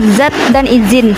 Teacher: Fonem Z memiliki satu alofon yang diucapkan dengan bunyi kerongkong bergetar.